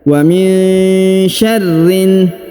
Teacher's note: huruf nun sukun bertemu Sya maka didengungkan dan disamarkan